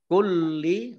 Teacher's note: lamnya dibaca double ada tasdidnya